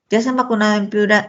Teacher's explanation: Sí o no es la respuesta. Entonación ascendente.